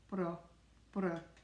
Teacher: often when D is at the end of the word, we don't say it. Like the word brød is bread, B-R-O-D, brød, brød.